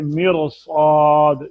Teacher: अब जेर को नहीं देखेंगे, रा को, साद चूंकि पुर है तो साद का पुर पढ़ना बहुत जरूरी है। साद का अगर पुर नहीं पढ़ेंगे तो साद सीन बन जाएगा। रा का पुर पढ़ना बहुत जरूरी नहीं है, क्योंकि रा को अगर बारीक पढ़ेंगे, बारीक पढ़ना बहुत जरूरी नहीं है, अगर रा को पुर कर लेंगे तो रा रा ही रहेगी।